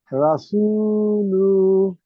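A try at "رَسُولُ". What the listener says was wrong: লু টান হবে না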